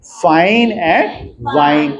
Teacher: The initial sound इन the English words फाइन एंड वाइन। फाइन एंड वाइन are लेबियोडेंटल